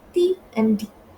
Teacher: are alveolar, since the tongue blade is pressed against the alveolar ridge